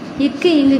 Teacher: நாவின் முதல் அன்னத்தின் அடி